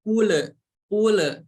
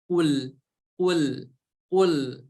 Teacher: huruf lam sukun ini tidak memiliki sifat qalqalah. Jadi hati-hati, tidak boleh dipantulkan.